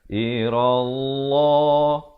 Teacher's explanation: Dibacakan lafzu jalalah dengan tebal 2 harakat.